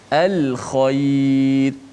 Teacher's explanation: lam hujung lidah, hamzah di mana di pangkal halqum, ha di tengah halqum, kha di hujung halqum. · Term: lam qamariyah